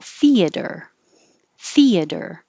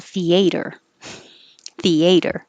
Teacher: most common is stress on the first syllable theater theater however you will hear people say with stress on the second syllable theater theater